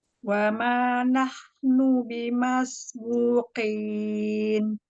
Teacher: Huruf qafnya ya sempurnakan bertemu dengan langit-langit yang lunak ya.